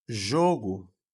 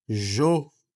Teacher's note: Quando eu falo jogo, esse o aqui, ó, primeiro o, jo, ele é mais fechado